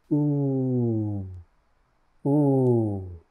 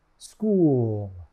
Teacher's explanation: To make the U sound, your lips should be tense and rounded. U, U. Your tongue should be slightly tense and high toward the back of your mouth. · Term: U vowel sound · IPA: /u/